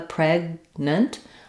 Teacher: I use basically what's called an unreleased uh stop consonant here PR I close off um either in my throat or